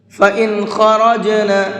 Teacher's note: اس نون کو صاف صاف پڑھیں گے، اظہار کر کے پڑھیں گے، اس لیے کہ نون ساکن کے بعد میں خا ہے اور خا اظہار کے حرفوں میں سے ہے، اور اظہار کا مطلب ہے یہاں نون کو صاف صاف پڑھنا ہے، غنہ اخفا نہیں کریں گے۔